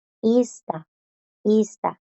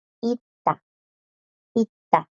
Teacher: las s no suenan porque a la par tiene esta D en la misma palabra le sigue una t y la d las bloquea y